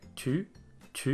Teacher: i would say that this one is aspirated sometimes in french especially in a word like two two you do hear a little bit of a gush of air there